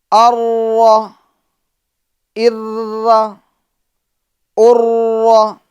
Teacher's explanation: یعنی جب را کا ہم ادا کریں گے تو را کے اندر تکرار پیدا ہوگی، کپ کپاہٹ ہوگی، اور اتنی بھی زیادہ کپ کپاہٹ نہ ہو، تکرار نہ ہو کہ ایک را کئی را معلوم ہو. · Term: صفت تکرار